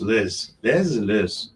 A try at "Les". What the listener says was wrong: Actually, the S I think is silent. Les Yes, Les French Twins.